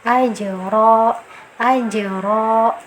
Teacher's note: Pantulannya kecil saja ya, karena dia termasuk qalqalah sugro, kecil saja, sambil jalan saja.